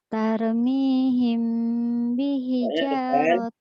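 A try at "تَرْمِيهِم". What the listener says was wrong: Ro'nya tebal, jangan tar.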